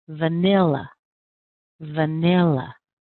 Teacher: Can you hear it? It's right on the second syllable, nil. Nil. Nil. It's a little bit longer. It's a little bit stronger.